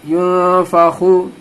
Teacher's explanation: यौमा, या नून पेश यून, नून साकिन के बाद हुरूफ इख्फा में से फा आ रहा है, हुरूफ इख्फा में से फा आ रहा है, यहाँ पे नाक में आवाज को रखनी है, इख्फा करना है